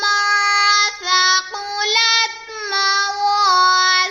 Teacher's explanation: نون ساکن کے بعد سا حرف اخفا میں سے آ رہا ہے تو یہاں پر اخفا کا قاعدہ ہو رہا ہے، یہاں پر ہم گنہ کریں گے، قاف کو پر پڑھیں گے، آگے لام کو تا سے ملا دیں گے، الف سے پہلے واو کے اوپر زبر ہے تو یہاں پر الف مدہ کا قاعدہ ہو رہا ہے، اسے ہم ایک الف یعنی 2 حرکات کے برابر کھینچ کر پڑھیں گے۔